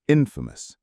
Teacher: Famous has a schwa in the final syllable, famous, and infamous has two schwas in the second and final syllables